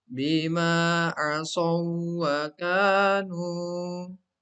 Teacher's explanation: Kemudian contoh yang ketiga, bima asaw wa kanu. Di sini ada pertemuan dua huruf waw. Yang pertama sukun diidghamkan ke huruf waw yang kedua yang berharokat.